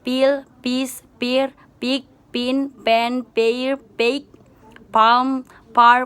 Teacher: Voiceless bilabial stop sound